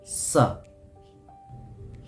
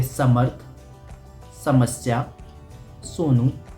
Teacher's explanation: सा को बोलने में हमारी जो जीभ है, जो हमारी टंग है, वो हमारे दांतों के सामने टच होती है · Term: सरोते वाला सा